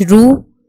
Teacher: را پہ جب زبر اور پیش ہم نے پڑھی تو را کو پر پڑھا